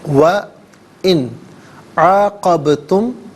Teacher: وَإِنْ عَاقَبْتُمْ، ان میں نون ساکن ہے، اس کے بعد حرف حلقی عین آ رہا ہے، تو نون ساکن کو یہاں اظہار کے ساتھ پڑھیں گے، یعنی اخفا یا غنہ نہیں کیا جائے گا۔ وَإِنْ عَاقَبْتُمْ، قبتم میں آپ دیکھیں با ساکن ہے لیکن حرف قلقلہ ہے، تو آواز لوٹتی بھی محسوس ہونی چاہیے، عاقبتم نہیں، عاقبتم۔